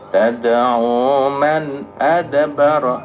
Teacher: Man adbara itu idhar, non mati ketemu dengan hamzah. Coba. Tad'u man adbara wa tawalla wa jama'a fa'au'a innal insana khuliqa halu'a khuliqa halu'a idza massahu syarru jazu'a.